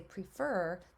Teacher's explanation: when I say prefer the way I pronounce it where I live that e is a long e prefer um and then when I say preference I change it